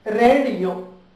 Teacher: two vowel sounds occur consecutively and pronounced separately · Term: diphones